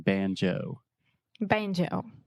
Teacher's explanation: we really exaggerate that moving vowel, the O sound